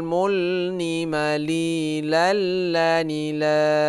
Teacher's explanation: Nah, ini idgham bila gunnah. Jadi tidak berdengung. Lu lal la. Dia itu seperti bertasydid, ya.